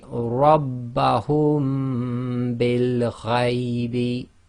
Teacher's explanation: So instead of saying Rabbahum, taking a pause and then saying bil ghaybi, we say Rabbahum bil ghaybi. So you're closing your lips on the hum, applying the ghunna, and releasing the lips by saying the bil.